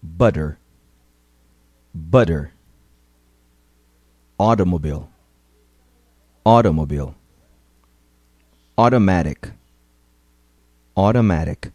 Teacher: Quando ele vem entre duas vogais, ele perde o som de T e adquire o som de D. Mas não é um D forte, bem pronunciado. É um D bem rapidinho.